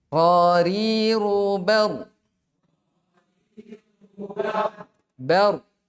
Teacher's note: Adapun ro ketika fathah, ya, dia dibaca tebal.